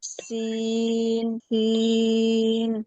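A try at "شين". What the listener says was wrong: শিন শক্ত হবে, শিন।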